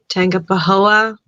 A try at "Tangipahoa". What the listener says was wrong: Instead of the hard G, Tangipahoa.